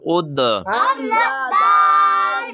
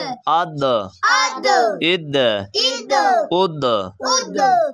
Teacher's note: یہ جو دال ہے نا یہ حروف قلقلہ ہے، تو اسے ہم نے ایسے دبا کے پڑھنا ہے